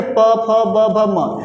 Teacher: देखिए प वर्ग, फ वर्ग, ठीक है, प फ ब भ म, आपका क्या होगा, ये ओठ क्या करेंगे, एक दूसरे को टच करेंगे, स्पर्श करते हैं, इसलिए क्या हो जाएगा, ये ओष्ठ हो जाएगा और इसका नाम क्या हो जाएगा, ओष्ठी हो जाएगा।